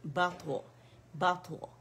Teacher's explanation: तो मोटा लेटर है इतबाक वाला, इसमें कलकला भी है